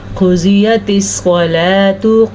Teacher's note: قاف موٹا اور ضاد بھی موٹا کیونکہ یہ دونوں حروف مستعلیہ میں سے ہیں